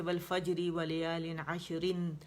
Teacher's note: تو یہاں پہ دیکھیں، یہاں پہ تو والفجری ہے نا، تو باریک را پڑی جائے گی اگر ہم روانی کریں گے، جیسے والفجری ولیال عشرن، اور رن اگر آپ پڑھیں گے تو آگے پھر آپ نے رول دیکھنا ہے کہ رن کا جب نون ساکن ہے اس کے بعد کیا آ رہا ہے، تو عشرن، تو آگے ہمارے پاس ادغام ناقص آ رہا ہے.